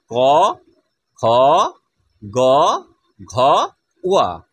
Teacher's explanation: ক বর্গকে বলা হচ্ছে কণ্ঠবর্ণ, কারণ এটা কণ্ঠের থেকে বেরিয়ে আসে, কণ্ঠকে স্পর্শ করে বেরিয়ে আসছে।